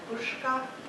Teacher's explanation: And then there's the sibilants, the hissy fricatives, s and z. Sometimes I thought I heard a retroflex sh in Cherokee before a k sound